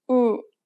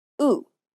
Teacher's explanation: The lips are more relaxed for the Korean ooh sound than the English ooh.